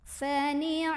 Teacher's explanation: Ma mad tabi'i karena ada alif sebelumnya fathah, maka huruf mimnya dipanjangkan 2 harokat.